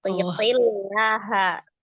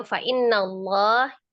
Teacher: Ya, tipis ya. Karena sebelumnya adalah kasroh, sebelum lafuz jalalahnya.